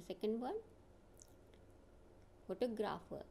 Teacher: Here the first sound is weak and the stress is on the second syllable. The other two are also weak.